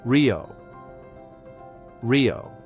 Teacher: The single R at the beginning of a word is also rolled but softer.